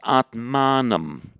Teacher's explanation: it is a feature of masculine nouns of the an declension, as in Atman, that in the accusative it lengthens the a